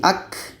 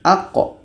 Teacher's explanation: Seperti ka. Kalau ka dia berangin. Ak. Tapi ini qa. Tidak ada anginnya. Aq. Bahkan hukumnya qalqalah.